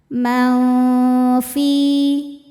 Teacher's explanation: Cara bacanya nun disamarkan ke fa disertai dengung, samar dan dengungannya sama besar. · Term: ikhfa hakiki ausath, ikhfa hakiki awsat